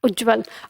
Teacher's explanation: त स्वयं को बदल देता है ज में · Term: व्यंजन संधि